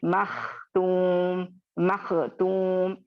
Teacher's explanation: मैं मखतूम, मखतूम, इस तरह से मैं कलकला भी नहीं कर रही हूँ, खौ को बारीक भी नहीं कर रही हूँ